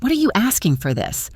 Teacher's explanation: In fast speech, what are you often gets compressed. It can sound like what'ya. · The T in what becomes a flap T, which sounds like a soft D, and are you reduces to aya.